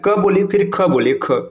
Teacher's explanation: क बोलिए फिर ख बोलिए, ख में ज्यादा वायु निकल रहा है ना, ज्यादा आपको थोड़ा सा दबाव ज्यादा देना पड़ रहा है।